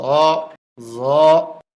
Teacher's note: ত জ এই হরফটিও 1 আলিফ পরিমাণ লম্বা হবে, জিহ্বার আগা উপরের দাঁতের আগায় লাগবে, নরম হবে, মোটা হবে। জ আইন কন্ট্রোলের মাঝখান থেকে চাপ দিয়ে আওয়াজটা শুরু হবে, 4 আলিফ লম্বা হবে।